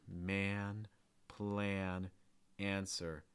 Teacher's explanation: you can feel your tongue sliding back and then you get a heavy breath out of your nose before the end